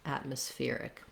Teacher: And then we add our ick syllable. So atmospheric, we go short, short, long, short · Then when we change to atmospheric, the syllable stress changes, and we have stress on the fear syllable, secondary stress on at.